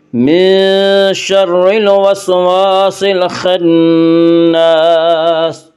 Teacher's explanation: من شر الوسواس الخناس، خا کو پر پڑھیں گے، خا حروف مستعلیہ میں سے ہے۔ خناس، نون مشدد غنہ ہوگا، غنہ کی مقدار ایک الف ہے